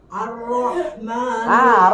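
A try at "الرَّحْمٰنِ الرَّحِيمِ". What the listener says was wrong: Ra-nya jangan jadi dibuka juga. Yang bunyi oo itu dibulatin mulutnya. Kalau lagi dibuka jadi rahma aja.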